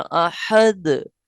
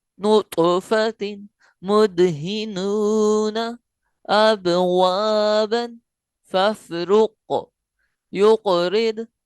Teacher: जो लास्ट में आ रहा है वहां कलकला खूब जाहिर हो रहा है, और जो दरमियान में आ रहा है उसमें कलकला थोड़ा सा कम मालूम होता है